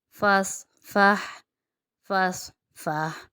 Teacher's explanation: فا صاد زبر فس، فا ہا زبر فہ، فس فہ، فس فہ۔ یہاں پر صاد جو ہے موٹا ہے، اس لیے اس کی موٹی ادائیگی رہے گی، اور اس کے ساتھ فا جو ہے وہ باریک ہے تو فا باریک ہی رہے گا۔